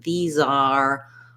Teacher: when we're linking to the next word, like these are, we're going to hear that Z sound strongly. If I'm just saying these by itself, I don't need a strong Z.